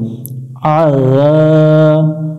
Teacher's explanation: আইনটা একটু গলা চেপে উচ্চারণ করব